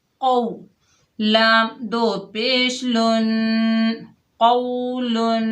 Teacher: قاف واو زبر قو، لام دو پیش لن، قولن۔ قاف کو بھی موٹا ادا کیجئے، حرف مستعلیہ میں سے ہے